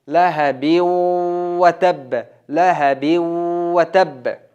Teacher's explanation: lahabiw watab Ana bu qattiq bo'ladi. lahabiw deganda murun bilan g'unna qilamiz.